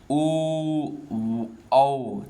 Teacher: तो ओ जब बोलेंगे तो ओठ हमारा गोल हो जा रहा है, यानी ओठ से भी जा रहा है, और हमारे कंठ यानी गले से भी निकलता है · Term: कंठोष्ठ